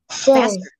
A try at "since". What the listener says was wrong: No, since. Don't say sins. Say since. Since. Faster. Instead of say sins, because when you say sins, it becomes this word. It becomes a word, a different word.